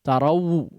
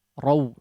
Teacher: namanya huruf lin harus ringan. Jangan sampai betul-betul menjadi waw, hidup